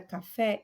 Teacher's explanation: eu vou ter aí uma sílaba tônica e é o fé, é a última sílaba, ok? Se é a última sílaba é tônica, ela vai ser chamada de oxítona, ok?